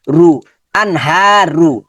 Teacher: এখানে নুন সাকিনের পরে হা আছে, তাহলে এখানে গুন্নাটা হবে না, 8টা হরফের সাথে মিলে গিয়েছে। আন, হাটা লম্বা হবে, হা মাদের হরকত লম্বা হবে